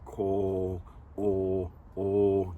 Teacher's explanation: nice and long, o, and kind of drop down in the back of the mouth, lips rounded for the O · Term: omega